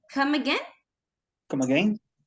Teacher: It's a rising intonation.